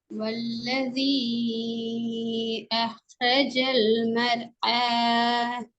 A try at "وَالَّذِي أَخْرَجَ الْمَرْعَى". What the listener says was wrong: வல்லதி நீட்டது போதாது. والذي أخرج المرعى.